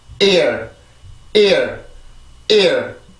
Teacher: 강세라고 해서 소리를 높이거나 그러는 게 아니에요. 성대를 한번 공기를 탁 막아주는 순간에 성대가 긴장을 해주게 되면서 강세가 만들어지게 되는 거죠.